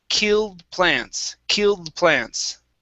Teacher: with that d we don't want to finish the d